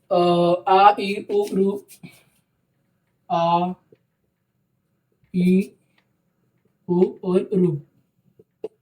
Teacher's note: दीर्घ मात्रा के उच्चारण में 2 मात्रा का समय लगता है। दीर्घ मात्रा के उच्चारण करते वक्त 2 मात्रा का 2 मात्रा का समय लगता है।